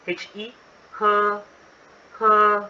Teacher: The Mandarin for drink is he, he, he, first tone